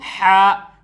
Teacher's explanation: ये हलक से निकलता है, बीच हलक से